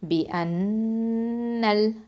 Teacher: இப்போது இந்த நூனில் வந்து முஷத்ததா இருக்கிறதுனால நம்ம என்ன பண்ணணும்? அக்மல் குன்னா கொடுக்கணும். பி அன்னல், லாமோட இணைது.